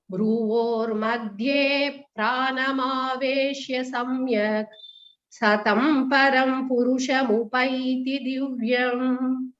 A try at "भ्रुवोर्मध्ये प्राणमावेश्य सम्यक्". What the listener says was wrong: Visarga pronunciation la after the k, couple of places I heard the ik sound. It should be the ich sound.